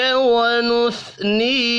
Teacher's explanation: ونتوکل علیک ونثنی، علی یا لین ہے، ونث سا ساکن ہے، قلقلہ نہیں کریں گے، نی یا مدہ ہے ایک الف کے برابر کھینچ کر پڑھیں گے